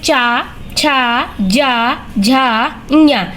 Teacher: स्पर्शी संघर्षी व्यंजन भी कहा जाता है।